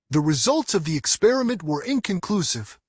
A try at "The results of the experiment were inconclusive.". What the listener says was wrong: एस भी नहीं आएगा, रिजल्ट्स नहीं बोल रहा था